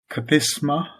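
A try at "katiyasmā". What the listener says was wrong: Don't cut off the ya. Wait, you're missing it. Yasa. Katiyasma.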